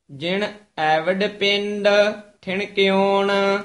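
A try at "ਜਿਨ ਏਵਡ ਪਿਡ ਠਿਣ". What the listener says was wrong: जिन नाने नाने नाल बोलना है, एवड पिड उचारण करना, पिंड नहीं है, जिन एवड पिड ठिण क्यों।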